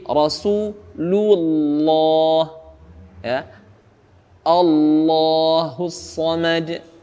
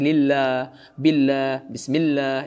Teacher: Nah, khusus untuk lam yang tebal, ini dia terjadi pada lafaz Allah Subhanahu wa taala saja. Pengucapan huruf lam pada lafaz Allah saja dia dibaca tebal. Dan itu pun lafaz Allah membacanya dengan tebal bukan pada saat berharakat kasrah sebelumnya.